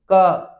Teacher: आपका जो मुंह खुलता है क तो किस कारण खुल रहा है वो इस अ के कारण खुल रहा है